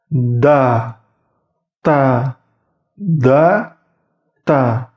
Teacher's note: ujung lidahnya itu berada di pangkal gigi seri atas. Ingat, pangkal gigi seri atas. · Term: huruf dal dan huruf ta